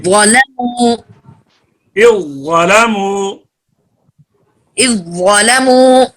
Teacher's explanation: اذ ظلموا زال ظا میں ملی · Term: ادغام